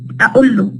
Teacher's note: Women would use the glottal stop